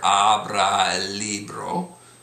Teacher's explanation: you'll notice that the vowels kind of slid together. Abra el libro, and the el and libro slid together.